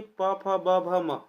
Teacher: प, फ, ब, भ, म है ना? यह किस में आते हैं? ओष्ठ वर्ण के अंतर्गत आते हैं।